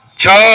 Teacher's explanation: તાળુંને અડકીને પણ ત્યાં જીભ નથી અડતી એની નજીક કોમળ સ્પર્શ હલકી અડકે છે તો તેને કહેવાય તાલવ્ય